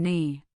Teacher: In words beginning with KN, the K is utterly silent. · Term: silent K